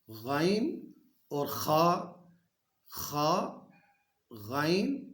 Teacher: یہ حلق کے ابتدائی حصے سے، حلق کے شروع سے جو ہے نا، یہ غائن اور خا یہ ادا ہوگا۔ ہمارا جو حلق ہے نا، اس کے ابتدائی حصے سے غائن اور خا غائن یہ ابتدائی حصے سے ادا ہوگا۔